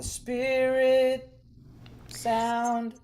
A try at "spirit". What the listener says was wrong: is it spirit sound? So our first diphthong, spirit, spear. It's almost like we're saying the word spear it. So what we want is spirit. Spin, and both of them. So instead of spear, this is kind of the fundamental uh, shift in thinking.